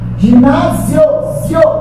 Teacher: Não é meramente paroxítona terminada em O, é paroxítona terminada em tom crescente